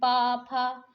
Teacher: आप पा का उच्चारण करते हैं, देखते हैं आपके ऊपर नीचे के ओठ जो हैं दोनों आपस में स्पर्श करते हैं, छूते हैं। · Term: ओष्ठ